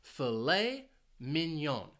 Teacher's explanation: this food is actually two words and the stress is on the second syllable for each word